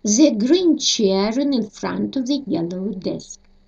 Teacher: Конечно, большой ошибки не будет, если не произнести, но перед гласными звук «р» здесь произносится на конце слов